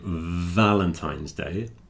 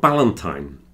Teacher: Everyone pronounces the V as a B here.